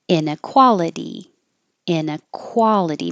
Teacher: Make sure you round your lips for quality.